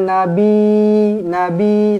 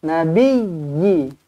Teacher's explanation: pastikan ya ditekankan betul-betul sebab apa dia ada sabdu